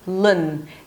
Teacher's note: Then you bring the tongue up for an L sound, L, and then relax it, drop it down to a schwa, and bring it back up to an N